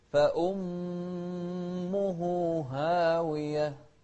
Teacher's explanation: وضحنا الهاء بعدها هاء أخرى، واحدة مضمومة واحدة مفتوحة